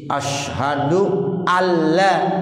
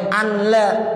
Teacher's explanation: Tuh jadi asyhadu alla, nggak boleh anla. Ya nun mati ketemu lam, itu namanya idgham bila gunnah